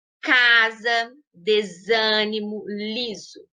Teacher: quando a consoante s aparece no meio das palavras em posição intervocálica ou seja entre duas vogais assumir a pronúncia z